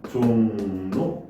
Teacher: 리을이 니은으로 변하는데 앞에서 영향을 받죠. 그래서 순행동화다 얘기를 할 수가 있습니다. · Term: 리을의 비음화